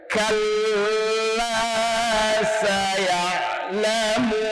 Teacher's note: Intonasi bacanya pun harus naik karena ini menidakkan.